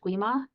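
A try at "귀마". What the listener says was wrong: Guima. You don't say G's like Gui, they're like a hard ja. So Jama, something like that.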